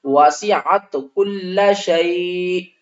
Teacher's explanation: آخری حرف ساکن سے پہلے دیکھیں حروف لین ہے، اس کو ہم نے 3 الف کی مقدار کھینچ کر پڑھنا ہے · دو زیر ہیں، دونوں زیر ختم ہو جائیں گے، حمزہ ساکن ہو جائے گی